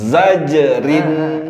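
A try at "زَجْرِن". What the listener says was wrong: Rin tipis. Zajerin. Rin.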